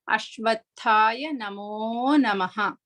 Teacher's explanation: For that Mahaprana Tha, we need to stress bit more, such a way we can feel the air blow through our palm.